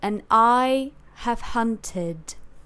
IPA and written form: ən 'aɪ | həv'hʌntɪd (And I have hunted)